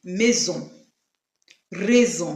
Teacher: it has the Z sound, which is pronounced when it is in between two vowels